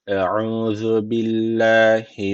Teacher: Billahi derken Allah lafzı burada ince okunuyor. Çünkü öncesindeki harfin harekesi altta. Yani Allah lafzının alttan giriş yapılıyor.